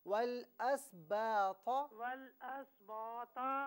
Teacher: با کو جو ہے نارملی پڑھیں، تو کو پر پڑھنا ہے